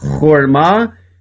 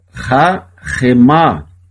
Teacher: Se em cima eu tenho um O e um A, embaixo eu tenho um A na primeira sílaba e um A na segunda sílaba. O Shevá aqui ele é mudo, por isso que lê horma, e aqui ele é pronunciado rahemá.